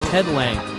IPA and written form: lændʒ (Lange)